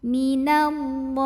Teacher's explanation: Lam pada lafaz Allah dibunyikan secara tafkhim karena huruf sebelumnya nun barisnya fathah. Maka dibacanya tebal, loh pangkal lidah kita naikkan. Minallah. Lalu alif lamnya dinamakan dengan alif lam syamsiyah karena alif lam menghadapi huruf syamsiyah yaitu lam.